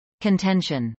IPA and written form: kəntˈɛnʃən (contention)